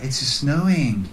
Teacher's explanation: Another important form of connected speech happens when we have two s sounds, one at the end of the first word and then another s sound at the beginning of the next word